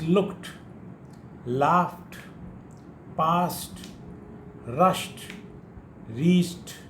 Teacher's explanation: Heaped, we say heaped, it is not d, but rather it is t